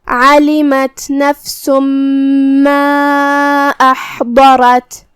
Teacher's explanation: پھر حرف الضاد ہے، ضاد کی ادائیگی زبان کے کروٹ اور اوپر کے داڑھوں کی جڑ سے ہے۔ ضاد حروف التفخیم میں سے بھی ہے تو ہمیں اسے بھاری آواز میں منہ پھلا کے ادا کرنا ہے۔ · مد جائز منفصل کا معنی ہے کہ حرف المد پہلے کلمہ کے آخری میں ہو اور اس کی وجہ جو کہ حمزہ ہے وہ دوسرے کلمہ کی شروعات میں آئے۔ مد جائز منفصل میں ہم اپنی آواز 2 سے 4 مد کے برابر لمبی کریں گے۔ کلمت احضرت میں یہاں شروعات میں حمزہ قطع ہے تو ہمیں حمزہ کو ظاہر کرنا ہے۔ · ہا کی ادائیگی حلق کے درمیان والی حصے سے ہے اور جو کہ اس پہ جزم ہے تو ہمیں ہا کو ظاہر کرنا ہے۔